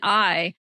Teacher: in I, the first part of that vowel is actually the central A. But, we don't have it by itself.